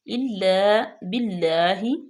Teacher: اللہ کے نام کو باریک پڑھیں گے